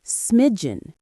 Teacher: Two syllables. The stress is on the first syllable.